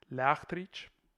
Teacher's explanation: the CT becomes HT, which represents a velar fricative and then T